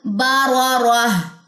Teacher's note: اس کی تنوین جو ہے وہ ڈراپ ہو جائے گی، پیچھے ہائے ساکنہ رہ جائے گی · تو دونوں را جو ہے وہ موٹی پڑی جائیں گی، اقصی لسان پیچھے سے اٹھے گی